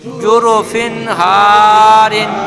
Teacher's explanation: তানবিনের আওয়াজ নাকে যায় কিন্তু গুণনা হয় না।